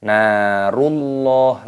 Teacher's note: nunnya berharokat fathah, ada tanda alifnya, maka dibaca panjang mad tabi'i 2 ketukan